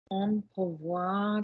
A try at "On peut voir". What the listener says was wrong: Not pot. No, no. What is the vowel I need for can? Thank you. Pot. No, different vowel. On peut voir. Slide properly.